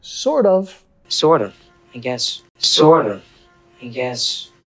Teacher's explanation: Acá tenemos que vincular con la R suave, sort of.